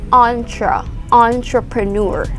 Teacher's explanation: the sound is like french sound uh because this word is actually borrowed from french